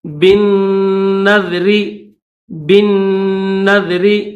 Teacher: پڑھیں گے، اس کے ساتھ یہ لام بھی نہیں پڑھیں گے، ڈائریکٹ با کو نون کے ساتھ ملائیں گے